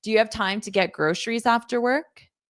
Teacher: this is a yes no question. So, you can hear my rising intonation at the end.